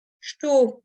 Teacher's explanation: estou, donc avec le S qui se prononce ch, et le OU qui va se prononcer O